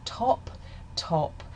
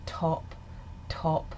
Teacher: For example, in the word top, top, there's a burst of aspiration. Top top after I say the t sound, you can feel a strong burst of air in this accent.